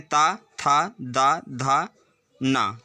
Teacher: ता, था, दा, धा, ना सारे ही दंत से उच्चारित वर्ण होते हैं